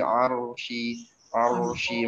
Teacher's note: Ain ditekan, huruf ro-nya mesti tebal. Begitu setelahnya ada syin tengah lidah.